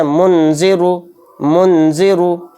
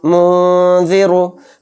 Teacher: منذرو، منذرو، تو یہ غلط ہو جائے گا۔ تو اس کو نون کی آواز کو ناک میں چھپا کر پڑھیں گے، کیوں؟ کیونکہ اس میں اخفا ہو رہا ہے۔